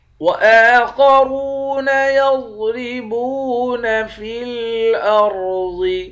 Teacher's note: خا اور را ان دونوں حرف کو موٹا پڑھیں گے، واو کے ساتھ ملا کر ایک الف کے مقدار کھینچ کر پڑھیں گے۔